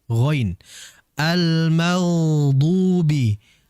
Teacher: Huruf ghain ini memiliki sifat tebal. Ya, dan dia juga memiliki sifat mengalir. Mengalirnya jauh lebih lama dibandingkan sifat tawassut.